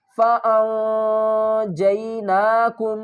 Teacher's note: نون ساکن ہے اور آگے حروف اخفا میں سے جیم آ رہا ہے تو یہاں پر ہم کیا کریں گے، نون کی آواز کو چھپا کر پڑھیں گے